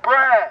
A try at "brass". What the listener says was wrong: Brass, not grass, brass with a B.